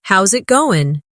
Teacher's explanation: The is disappears, and the final G in going often softens. This is called connected speech.